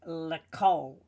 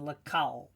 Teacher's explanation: often the kamatz there is actually taken as a short O sound, according to the modern grammar rule of the kamatz, where it's a closed loop.